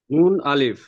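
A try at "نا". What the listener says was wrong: টান দিতে হবে, নুন তিন আলিফ পরিমাণ টান। নুন আলিফ।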